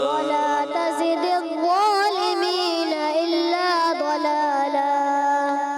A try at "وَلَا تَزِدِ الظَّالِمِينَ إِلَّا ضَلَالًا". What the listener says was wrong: ضلالا ضاد موٹا رکھنا ہے، ضاد پر رکھنا ہے، دلالا نہیں، ضلالا نہیں، ضلالا، صحیح ہے؟